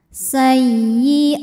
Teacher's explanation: maka a kita panjangkan dua harakat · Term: mad badal